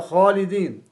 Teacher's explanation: الإفراد في تفخيم الخاء، خاصة إذا جاورت الألف